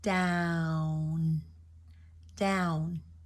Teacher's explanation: again that n at the end has to go to the roof of the mouth the tongue the tongue has to reach the roof of the mouth imagine it as as if it's a magnet up there it